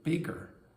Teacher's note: the G in the middle is more clearly voiced